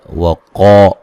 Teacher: قاف کو موٹا ادا کریں گے